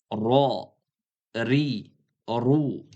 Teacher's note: Tilni uchi va qisman til o'rtasi qattiq tanglayga urilib chiqadi. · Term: titrovchi harf